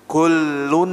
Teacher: Nun kalau Nun dia murni di hidung